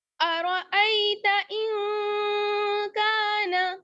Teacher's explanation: حمزہ کو نون سے ملائیں گے، یہاں نون ساکن ہے اور اس کے بعد حروف اخفا میں سے کاف آ رہا ہے، اس لیے نون کی آواز کو چھپا لیں گے. ارأیت ان کان، کاف الف زبر کا، نون زبر نا، کان.